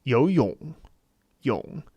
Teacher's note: It's not that it's not there, it's just that because third tone is quite low and it's short, it's not exactly cut off, it's just that it is by its very nature somewhat short.